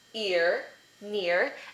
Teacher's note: We have ear as in near, and that's the combination of the small cap I as in kit, and the schwa plus rhoticity